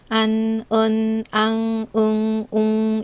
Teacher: 안, 은, 앙, 응, 웅은 소리 낼 때 비강에서, 즉 콧소리를 낸다 해서 비음 운모라고 해요. 그래서 여러분들도 이 발음할 때에는 콧소리와 함께 안, 은, 앙, 응, 웅 이렇게 발음 연습을 하세요.